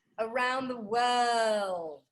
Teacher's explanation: if it is british it is dropping the r's connected to vowels